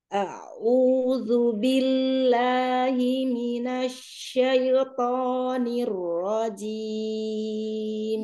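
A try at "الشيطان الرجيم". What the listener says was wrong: Iya, kenapa syaitannya miring lagi? Syai. Padahal dia gak butuh miring ya. Syaito. Kenapa harus syai? Coba asyaito normal. Coba usahakan lurus.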